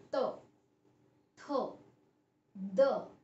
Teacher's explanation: जब हम उच्चारण करते हैं तो हमारी जीवा दांतों को छूती है, दांतों को छूकर मुख से हवा निकलती है। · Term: दंत्य